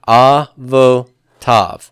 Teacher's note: Where's my accent here going to be? It's going to be on the final syllable. So, the vo is open and pretonic.